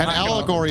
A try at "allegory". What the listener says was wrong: Oh, allegory. You didn't say allegory. You said algory. It's like, is that a form of algae?